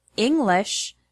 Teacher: the word English has the stress on the first syllable, ing.